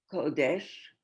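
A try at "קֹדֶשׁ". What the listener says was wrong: Kosh. no dalit. Yeah, just kosh.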